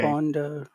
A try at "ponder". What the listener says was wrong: You're eating your P, but you should be pushing it out. Ponder. Ponder. You should feel the air come out. Because what you're doing is you're pushing it down and you're saying bonder, but you should be pushing it out and say ponder.